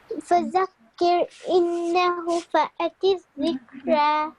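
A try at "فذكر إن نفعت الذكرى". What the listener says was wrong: Don't say إنه فذكر إن فأت الذكرى.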